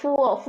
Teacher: এফ এর মধ্যে যখন বলবেন তখন কিন্তু দুই ঠোঁট একসাথে আর লাগানোর কোনো দরকার হচ্ছে না নর্মাল ফ যেভাবে বলেন তেমন ফুয়ো ফুয়ো বললেই হবে বলেন ফুয়ো